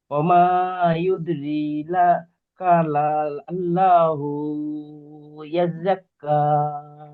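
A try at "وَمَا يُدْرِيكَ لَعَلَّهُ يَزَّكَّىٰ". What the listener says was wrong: ওমা ইউদরি কা, কাফ জবর কা।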